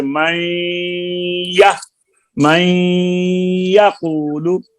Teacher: نون کو اپنے مخرج کے قریب لگا کے رکھنا ہے اور ناک سے آواز نکلتی رہے، یا کے مخرج میں زبان نہ آئے جب تک غنہ مکمل نہ ہو جائے